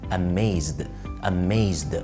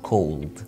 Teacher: الحروف دي كلها اسمها voiced sounds او حروف صوتية، وبيبقى فيه vibration هنا